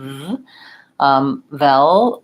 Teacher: the V sound that you have teeth and lip connecting and the sound continues